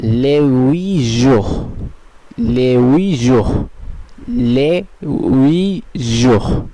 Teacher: যদিও আশটা সাইলেন্ট আছে তবুও এস এখানে ও এর সঙ্গে সংযুক্ত হচ্ছে না